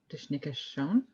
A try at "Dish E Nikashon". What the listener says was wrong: Yeah, don't forget that E between the dish and the nick. Dish nick E. Dish E Nikashon.